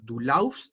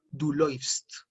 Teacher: Que porque en esta palabra, en laufen, Cuando lo conjugo en la segunda persona suena, no digo laufst, sino que suena läufst, porque recuerden, esto es un diptongo. Cuando tenemos la A umlaut y la U, es como si tuviéramos una E y una U.